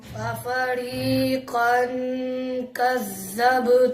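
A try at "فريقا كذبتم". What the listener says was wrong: कैसे सीटी क्यों निकाल रहे दाल पे? कज़्ज़बतुम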